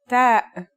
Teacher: The pronunciation is like the English T except you should release your breath with a strong burst of air.